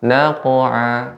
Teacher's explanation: pengucapan qalqalah yang merupakan huruf isti'la sehingga dibaca dengan tebal